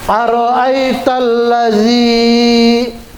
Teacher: Al-ladzi ini mad tabi'i. Nah, itu berarti panjangnya dua harokat ya, atau dua gerakan atau dua ketukan.